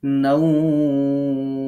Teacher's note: এখন আমরা যখন নাওমে থামবো তখন আমাদেরকে এরকম দুই আলিফ টেনে পড়তে হবে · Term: মাদলিন